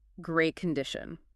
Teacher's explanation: the TT sound at the end of great that often becomes silent especially when you're speaking quickly · We often connect words together when we speak. So instead of saying great condition with two separate T sounds, we say great condition all as one smooth phrase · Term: linking